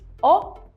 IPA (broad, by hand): ɒ